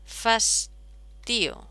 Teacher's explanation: Ocurre que fastidium, esta es la sílaba tónica. Bien, pues esta postónica se sincopa, ocurre una síncopa y nos queda fastío.